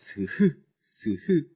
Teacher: 공간을 만들어주고 그 사이로 공기를 씩씩씩씩 보내면서 마찰을 일으킨다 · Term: 마찰음